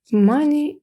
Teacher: наголос паде на перший склад